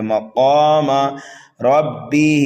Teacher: را کو پر پڑھنا ہے اور ہا کو کھینچ کر کے پڑھنا ہے